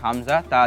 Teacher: তুমি যদি জিহ্বার অগ্রভাগের পিঠ তোমার দন্তমূলের সাথে লাগাও তখন উচ্চারিত হয় তা